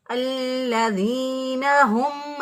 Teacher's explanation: یہ حروف حلقی میں سے ہا ہے اور یہ اقصی حلق سے ادا ہوتی ہے، یعنی سینے کی طرف جو گلے کا حصہ ہوتا ہے وہاں سے یہ ہا ادا ہوگی.